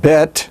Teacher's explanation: it is pronounced as a bee or a hard b which is a stop a bilabial stop and voiced